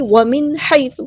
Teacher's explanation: ہا کو وسط حل کے مڈل تھروٹ سے ادا کریں گے ، حیث نہیں حی، اور یا لینا یہ نرمی سے بولیں